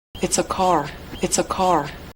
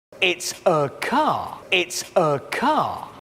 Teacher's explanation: en la primera oración el sonido R, car, se enfatiza, mientras que en el segundo no se escucha en absoluto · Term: la R estadounidense